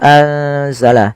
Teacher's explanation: dibaca dengan bacaan ikhfa. Nunnya disamarkan ke huruf zai.